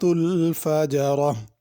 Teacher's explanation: الفجرہ آخر میں ہا ہے، اس کو ظاہر کر کے پڑھنا ہے